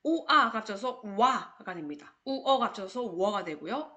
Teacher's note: 요때 발음 나는 오와 우는 온전히 발음 나지 못하고 스치듯이 반만 발음 나기 때문에 혼자 쓰일 수 없는 요런 아이들을 우리 반만 모음이다 라고 해서 반모음이라고 부릅니다